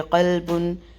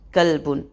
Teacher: اس کی ضرورت کی ایک مثال چھوٹی سی ہے، وہ کامن اکثر دی جاتی ہے کہ قلبن قلبن، قوف موٹا ہے اور کاف باریک ہے